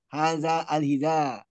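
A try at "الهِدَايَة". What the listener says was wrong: Nggak boleh disukun, Pak. Ujungnya nggak boleh. Ujungnya kok digantung katanya.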